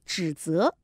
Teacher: 容易混淆了。咦，老师不如读一次了，一阵子咁应该点读呢？一阵子，一阵子，对了，嗯，对了。咁啊，赠汪伦呢？那赠汪伦，赠汪伦，对，嗯，平的声母部分平的，韵母的部分后鼻音，哈，要注意一下。那大概他的问题呢，语音方面的问题就大概这样了哈。嗯，那个指责的那个这两个音啊。一个指一个责，指呢是翘的，指责呢是平的，责。那这个词语呢，小朋友们这个旁白呢就掌握得很好，嗯，指责，你看说实在的， 这个词语一翘一平呢 ，要你读的话呢，好难，好难的，尤其是如果心急的时候更加会掠咗嘅。咦，老师啊，我听到咧喺剧本里面咧都出现过唔止一次咧，就系醉醺醺啊！我哋话啊，饮到咧好似有少少晕晕地啦，开始神志唔系好清醒啦，我哋就